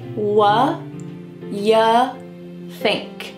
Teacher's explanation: Do is just gone. It's completely absent from the sentence.